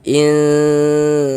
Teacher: kita baca samar bunyi nun sukunnya. Kemudian kita dengungkan